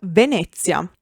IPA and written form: veˈnɛtʦja (Venezia)